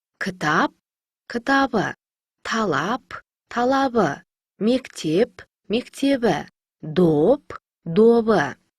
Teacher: П дыбысына аяқталған сөздерге дауысты дыбыстары жалғанса, П дыбысы Б-ға айналады.